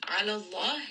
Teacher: name of Allah here is heavy. The letter before has fatha.